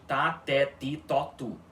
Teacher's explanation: o T na língua balorana sempre vai ficar com esse som de tá, tó tu, OK? Sem nenhum chiado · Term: t puro